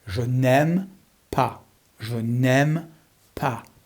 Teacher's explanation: make sure you don't pronounce the S